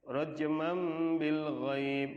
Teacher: Tanwin ketemu ba berarti ya dibacanya mim ya.